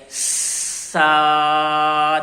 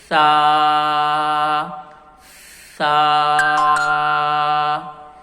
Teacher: جب آپ زبان کو دانتوں کے درمیان میں نہیں رکھیں گے تو آواز سختی کے ساتھ ادا ہوگی، چینج ہو گئی ہے۔